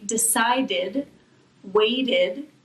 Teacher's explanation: It makes an extra syllable, so it makes an id sound. Decide is the base verb, and decided, we add an extra syllable.